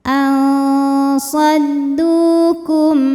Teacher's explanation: Karena ada wau sukun didahului dhammah, maka panjang dalnya dua harakat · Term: mad thobi zohiri